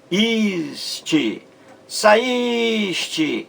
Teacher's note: Você vê aí um hiato também, o I formando um hiato em relação à vogal anterior, A. Então, duas vogais aí em saíste, a vogal A e a vogal I, em sílabas diferentes. Então, hiato.